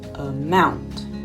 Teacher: with a word like a mount the stress is coming on the second part amount and so the first the uh is not as important